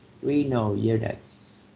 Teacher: So we put like a stress on the first syllable with renal, right?